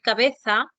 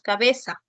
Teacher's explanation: la fricativa alveolar sorda frente a la interdental, a la fricativa interdental. En lugar, por ejemplo, de producir cabeza, con la interdental, decimos cabeza. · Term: seseo, ceseo